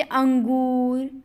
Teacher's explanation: अंग की मात्रा बोल के देखिए उसमें नाक का ज्यादा प्रयोग है मुंह बिल्कुल नहीं है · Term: अनुस्वार